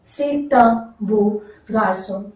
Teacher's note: So notice we are repeatedly linking the vowel and the consonant sound.